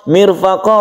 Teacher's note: ro yang sebelumnya ada kasr disebut ro tarqik atau tipis kemudian mirfaqo qofnya ini adalah Mad Iwat kita panjangkan satu Alif